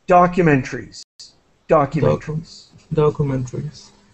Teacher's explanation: And just to let you know, I say documentaries. So I don't really pronounce the syllable created by the A here. We say in English, well, in English teaching, we drop that syllable.